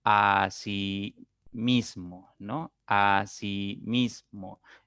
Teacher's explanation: acentuación a sí mismo no a sí mismo entonces tenemos que la mayor fuerza la mayor intensidad de la voz recae en la segunda sílaba contando de derecha a izquierda por lo tanto esta es una palabra grave que no va